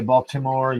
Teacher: I hit that T sound in there. That's not a Baltimore thing.